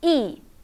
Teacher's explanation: And last, E is a falling tone.